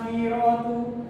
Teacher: Contohnya adalah akhiratu, tetapi Warsh baca secara akhiratu. Okey, untuk riwayat Qalun, ra' dibaca secara tafkhim. Tafkhim ni adalah tebal, lawan nipis adalah tebal.